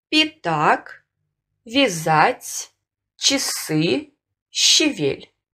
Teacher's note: После мягких согласных рекомендуется произносить гласный звук И с призвуком Э, средний между И и Э.